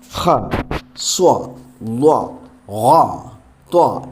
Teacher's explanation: ഹ, സ്വ, ള, ഖ, ത്വ എന്നൊക്കെ ഉച്ചരിക്കുമ്പോൾ അതിൻ്റെ ശബ്ദഗതി അണ്ണാക്കിലേക്ക് ഉയരുന്നുണ്ട്